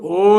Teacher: ఓ లో మీకు వినిపిస్తుంది ఆ వినిపిస్తుంది ఊ వినిపిస్తుంది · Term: కంఠ్యోష్టమ